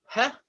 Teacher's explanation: The hey is like a breathy sound, like a h, almost like the letter H in Hebrew, the hey, h. It's a breathy sound, an airy sound